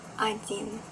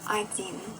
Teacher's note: pronouncing this sound as not an O, but as an A. That is due to this portion of the word to be stressed.